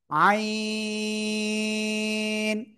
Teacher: গলা চেপে চার আলিফটা নিয়ে উচ্চারণ করব।